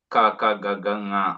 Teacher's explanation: Kavargiya Vyanjanani, Ka Ka Ga Ga Nga, all they get pronounced from Kanta